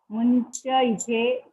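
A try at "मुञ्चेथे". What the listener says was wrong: मुंचे इथे नहीं मुंचे थे मुंचे एथे नहीं दोनों साथ में मुंचे थे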